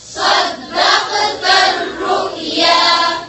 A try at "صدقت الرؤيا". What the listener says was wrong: दाल को नहीं मोटा करें। फिर से पढ़ें।